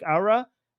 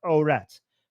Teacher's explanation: Arabs pronounce the last letter without a T sound, so it sounds like Aura, and Iranians pronounce it with a T sound, so it's Orat.